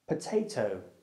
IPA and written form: pəteɪtəʊ (potatoe)